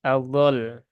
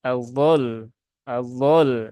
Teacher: cuman harakatnya dari dah dipindah e diubah menjadi sukun Nah maka jangan hanya ditunaikan lamnya saja tapi juga harus ditunaikan tasdidnya ya jadi jangan dibaca dengan Adol tetapi dibaca dengan Alul Adul